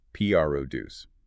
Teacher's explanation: You make that first syllable, the P R O, slightly louder, slightly longer in duration, and higher in pitch.